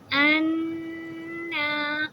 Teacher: اب یہ نون کے اوپر تشدید ہے تو حمزہ کو نون سے ملاتے ہوئے ان، یہ کھڑی زبر بھی ہے الف کی نون کے اوپر، تو پہلے نون کی آواز کو 2 حرکہ لمبی کریں گے، ان، اور اپنی زبان کو اوپر کے دانتوں کے پیچھے، اوپر کے سامنے کے 2 دانت ہیں اس کی برابر میں، اس کی جڑ سے لگاتے ہوئے تالو سے لگائیں گے تو ہم نون کی آواز کو بالکل صحیح غنہ کر پائیں گے۔